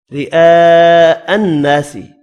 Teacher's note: را باریک پڑھیں گے زیر کی وجہ سے, بڑی مد کو 5 الف کی مقدار میں کھینچ کر پڑھنا ہے.